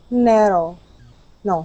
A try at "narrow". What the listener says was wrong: Okay, almost. Okay, narrow. We'll keep working on that R. In furiously, you were able to say the R just fine.